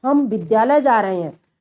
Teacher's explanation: सामान्य रूप में तो हम विद्यालय जा रहे हैं ये कर दिए, लेकिन अगर शब्दों पर बल हम दे के करेंगे तो वही बलाघात कहलाएगा। जैसे हम पर बल दिया जा रहा है बच्चों